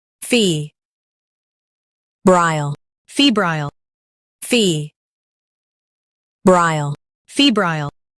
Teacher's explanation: fee brile febrile fee brile febrile In US, stress f e b and keep rile light. In UK, fee is emphasized.